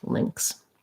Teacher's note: it's like an ling sound, lax I, and then a ks